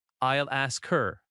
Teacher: I'll ask her becomes I'll ask her. The L flows into ask. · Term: linking